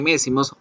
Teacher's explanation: m ya la aprendimos la de mes y más es como yo cierro la boca el aire se me da por la nariz es una consonante labial nasal